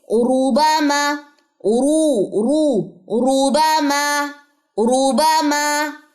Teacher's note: اگر را کے اوپر پیش آ جائے تو وہ را بھی موٹی پڑی جاتی ہے